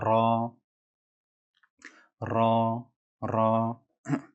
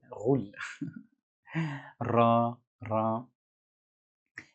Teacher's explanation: Et ici la lettre ra, ra, ra. Et lors de la prononciation de ra, il y a comme une vibration au niveau de la langue, ra, ra. Et on a l'impression que la langue roule.